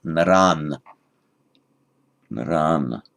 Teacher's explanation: So the accusative plural, the visarga narah changes to an N, naran.